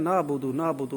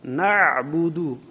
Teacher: عین جو ہے وہ حلق کے درمیان سے ادا ہوتا ہے